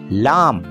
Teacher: زبان کا وسطی حصہ آگے سے اوپر تالو سے لگ جاتا ہے، اس آواز کو پہلوی آواز کہتے ہیں، جیسے لام۔